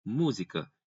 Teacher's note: É na antepenúltima sílaba a tonicidade. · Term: proparoxítona